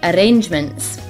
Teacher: The R's are rolled quite a lot, so they sound stronger and longer than in an English accent.